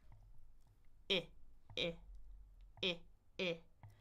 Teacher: My tongue just needs to move forward, but I'm just keeping my lips relaxed. I I I My tongue is in the front. My jaw is a little bit more open than the long I E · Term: short eye